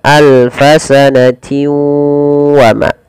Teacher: di sini harus dibaca dengan memasukkan tanwinnya kepada huruf waw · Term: idgham bi gunnah